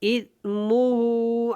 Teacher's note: سا نرمی کے ساتھ ادا ہوگا، اور ہو جو ہے الٹا پیش ہے ہا کے اوپر، اس کو تھوڑا سا لمبا کریں گے